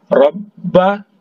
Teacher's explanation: ditahan karena ba ini bertasydid, rabba, ya, jangan tidak ditahan.